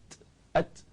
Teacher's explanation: hujung lidah diangkat kena pada hujung langit dekat berdekatan dengan gigi atas gigi depan dua gigi depan kita angkat duduk depan tu jadi lidah tu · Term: huruf Ta